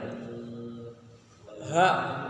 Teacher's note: Huruf ha itu memiliki 5 sifat, yaitu hamas, nafas berhembus, rakhwah, istifal, infitah, dan juga ismat.